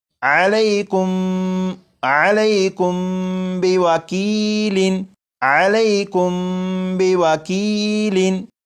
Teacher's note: میم ساکن کے بعد یہاں پر با ہے، جب میم ساکن کے بعد با آ جائے تو میم ساکن میں غنہ کر کے پڑھیں گے، جیسے یہ لفظ لکھا ہوا ہے علیکم علیکم، لیکن یہاں پر میم ساکن کے بعد با ہے تو اس میم ساکن میں غنہ کر کے پڑھیں گے اور یہ پڑھا جائے گا علیکم علیکم بوکیل، علیکم بوکیل۔